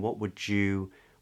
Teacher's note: And that's because when you get a D followed by a yod, in standard Southern British English, some speakers use something called yod coalescence